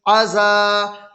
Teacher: الف سے پہلے زال پر زبر کی حرکت ہے، اس لیے الف مدہ ہوا، الف مدہ کو ایک الف کے برابر کھینچ کر پڑھیں۔